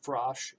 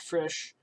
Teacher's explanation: One was called Frosh, and the other was called Frisch, and the consumers preferred the ice cream named Frosh. So the only thing that changed was the vowel in the name from a back vowel and to a front vowel, and the consumers preferred the back vowel, which is very interesting.